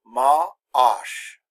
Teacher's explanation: not called a silent H is called an aspirated age and there's a little pause ma ah SH a little glottal stop there